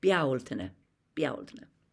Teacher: Bealtaine, Beaul. And Beaul is the emphasis.